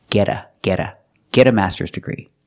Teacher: we see that t and get change to a fast D